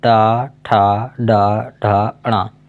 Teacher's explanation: इन सभी वर्णों का उच्चारण मूर्धा से किया जाता है।